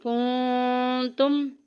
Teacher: میم ساکن کے بعد آگے تا آ گیا جو کہ اظہار شفی میں سے ہے